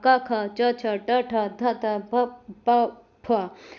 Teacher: अब आते हैं नॉन वेबरिंग या अघोष में इनमें स्वर तंत्रियों में कोई कंपन या गूंज नहीं होगा